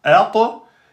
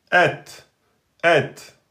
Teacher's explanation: Vous avez fait qalqala sur la lettre ta, il n'y a pas de qalqala. C'est la lettre ta emphatique qui porte la qalqala et le ta aminci ne porte pas la qalqala.